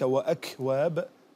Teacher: وكذلك وأكواب الهمس كان ضعيف غير ملحوظ